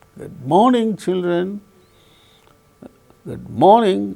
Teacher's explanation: then we can notice the falling tone occurring on the word morning.